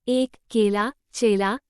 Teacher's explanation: यह अर्ध समृद्ध अग्र स्वर है। इसके उच्चारण में होंठ दोनों ओर ई से अधिक खुलते हैं।